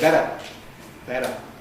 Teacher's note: The Australians have definitely taken on board the American T-voicing. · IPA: [ˈbeɾə]